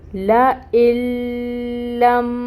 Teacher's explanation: یہ نون بالکل نہیں پڑھا جائے گا، اور ہم اس حمزہ کو لام کے ساتھ ملائیں گے، اور لام پہ تشدید ہے تو ٹائم ٹیکنگ ہوگا۔ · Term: ادغام بلا غنہ